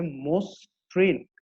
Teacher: মটা কিন্তু মোতে পরিণত হলো, অটা ওতে পরিণত হয়েছে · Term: আদ্য অ